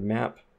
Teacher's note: in the word map we may have a closed p at the end